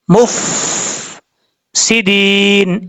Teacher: فا پہ قلقلہ نہیں کرنا، مف نہیں پڑھنا، مف سیدین اس طریقے سے پڑھنا ہے. اور دال کے بعد یا مدہ ہے، ایک الف کی مقدار لمبا کر کے پڑھا جائے گا.